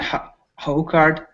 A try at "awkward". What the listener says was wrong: be careful because there's you're putting an H you're putting an AA an H in front